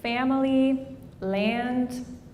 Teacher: So before M, N, and Ng, people will raise their vowels. So they will say family, land, etc.